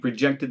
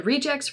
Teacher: notice that the emphasis again for most of these nouns is on the first syllable and reduces the second